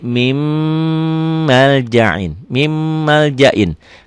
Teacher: Nun sukun, nun mati ketemu mim. Ditulisnya min maljain, dibacanya jadi mim maljain. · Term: idgham bigunnah